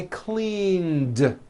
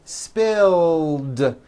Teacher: All I did was add a voiced D sound at the end. Rubbed. It's not rubbed with an unvoiced T, it's rubbed, like that.